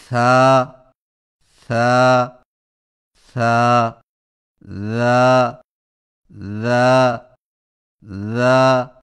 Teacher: ثا اور ذال کی ادائیگی میں زبان کی نوک کو سامنے والے اوپر کے دو دانتوں کے اندرونی کناروں سے نرمی سے لگا کر نرم اور بغیر سیٹی والی آواز میں پڑھیں